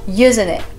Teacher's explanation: c'est le T qui disparaît